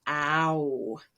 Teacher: simple past and past participle have the vowel ow in them it's a moving or changing vowel starts with ah and goes all the way to like a w